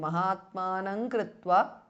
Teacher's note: so the anuswara changes to nga